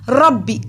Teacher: قا کو لمبا کیا، الف سے پہلے زبر ہے، حروف مد ایک الف کے برابر لمبا ہوگا. ربی، را کو موٹا پڑھیں گے، را پہ زبر ہے، را کو ایسے پڑھتے ہیں جیسے زبان وائبریٹ کرتی ہے